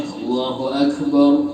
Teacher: Akbar ini nggak ada qalqalah dalam kaf. Kalau qaf ada qalqalahnya, kaf nggak ada.